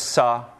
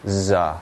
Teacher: They're both non-nasal. One's voiceless, sa. And the other's voiced, z.